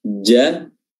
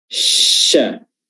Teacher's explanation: Adapun ja, dia lengket, pertengahan lidah lengket dengan langit-langit, tapi syah tidak lengket, tapi menyisakan sedikit ruang, terangkat, tapi menyisakan sedikit ruang untuk aliran nafas tadi, aliran udara tadi.